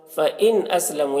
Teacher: نون ساکن کے بعد حمزہ ہے، حروف حلقی میں سے اظہار ہوگا، نون کو ظاہر کر کے جلد پڑھیں گے